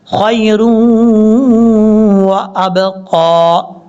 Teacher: را کو واو سے ملائیں گے، را واو دو پیش رون، یہاں پہ ادغام یرملون کا غنہ ہوگا